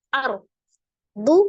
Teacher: ro sukun sebelumnya fathah maka dibaca dengan tebal ya rnya tafkim ar du muddat Dal tasdid dalnya douel dalnya